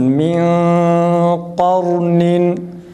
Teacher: Ra kalın, yalnız kalkale gibi olmasın. Kalkale sesi çıkmasın.